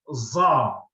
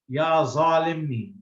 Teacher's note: the Egyptians also cannot pronounce it properly, and they usually say za, something with a Z, ya zalimni.